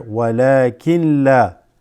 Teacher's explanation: But the noon sakin is going to mix with the lam here.